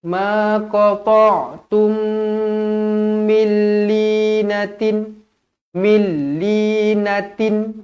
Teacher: dia akan jadi idgham bila gunnah, tidak dengung. Jadi bila saya kata tidak dengung, bacanya milli, jangan milli, salah.